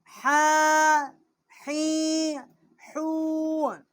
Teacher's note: چھوٹی ہا ہے، وسط حلق سے اس کا مخرج ہے۔ ہا کھڑا زبر ہا، ہا کھڑی زیر حی، ہا الٹا پیش حو، ہا حی حو۔